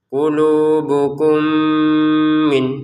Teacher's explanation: Untuk mim sukun bertemu mim kita masukin ya kepada mim yang kedua sehingga cara bacanya langsung saja ya.